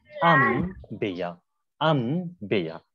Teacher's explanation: اس نون کو سائلنٹ کر کے آپ میم کے ساتھ تلفظ کریں گے اور ہلکے سی غنہ کی آواز بھی باقی رہے. غنہ کی آواز یعنی نون کی آواز. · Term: قلب